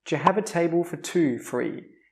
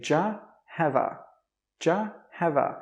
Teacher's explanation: We don't say do you. We don't say have a. We say djyuh hava.